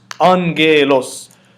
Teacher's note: So the first ghamma is pronounced as the N. The second ghamma is pronounced as the G. So it's angelos.